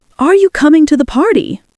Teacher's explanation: Strong rise at the end, even if it's not a question. That's called rising intonation, and it's a big clue to identifying accents. · Australian English has a sing-song upward lilt, almost like a question at the end.